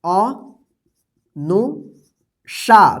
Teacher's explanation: तालव्य श का उच्चारण हो रहा है